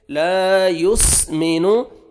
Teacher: الف مد ہے، الف سے پہلے زبر ہے، لام کو اپنے 1 سیکنڈ کھینچنا ہے. لا یسمنو، سین آپ نے پڑھنا ہے، صاد نہیں پڑھنا، اور سین پہ آپ نے قلقلہ نہیں کرنا